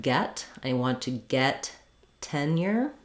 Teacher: in the word tenure, we have first syllable stress. It does start out just like the word ten.